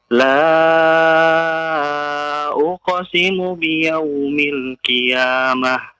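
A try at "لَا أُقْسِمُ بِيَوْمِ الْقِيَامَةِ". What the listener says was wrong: Yaumil qiyamah. Qi. Bukan ki ya, bukan ya. Tebal.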